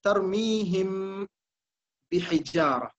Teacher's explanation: மீம் வேறாக பா வேறாக இங்கே மொழியப்படுகிறது. அப்படி வேறாக அந்த இரண்டையும் நாம் மொழிவதன் காரணமாக இங்கே தர்மீஹிமில் பாருங்கள், பச்சை நிறமாக அந்த மீம் இருக்கிறது. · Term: இஸ்ஹார்